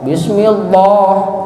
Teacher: Kalau lafaz Allah sebelumnya harakat kasroh, tajwidnya jadi tarqiq. Tarqiq itu tipis. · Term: tarqiq lam